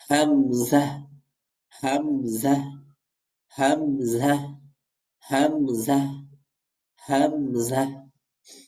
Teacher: হামজাটাও হলকের শুরু থেকে উচ্চারিত হবে।